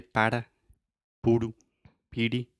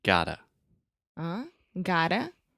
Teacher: your tongue is just touching the top of your mouth really, really fast, and it's just a quick little tap. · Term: flap T